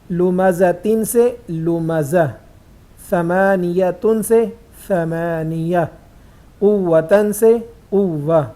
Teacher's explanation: اگر آخری حرف گول تا ہو تو وہ ہا سے بدل جائے گا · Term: ہا ساکن